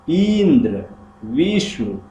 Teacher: इनमें संयुक्त अक्षर से पहले ई और वी पर जोर दिया गया है। तो जो इंद्र में जो संयुक्त अक्षर है इंद्र, उसके पहले जो ई आया है उस पर जोर दिया गया है, ऐसे वी पर जोर दिया गया। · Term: बलाघात